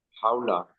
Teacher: ওয়াও সাকিন, হাওলা। জি ওয়াও সাকিনের ডান দিকে জবর আছে, এটাকে ওয়াওলিন বলে, নরম সুরে তাড়াতাড়ি পড়তে হয়